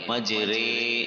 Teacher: امالہ کی راہ کو اردو کے لفظ کا رے کی راہ کی طرح پڑھیں گے، یعنی ری نہیں بلکہ رے پڑھیں گے